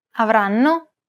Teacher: The first N is held for roughly the same amount of time as all the other syllables. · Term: syllable-timed language